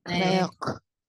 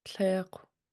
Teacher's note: this W tells you to round your lips, even if it occurs at the end of the word. It changes the sound of that underlying K.